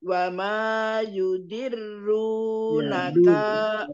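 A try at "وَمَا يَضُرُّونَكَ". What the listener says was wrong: wa ma yadurru tidak yu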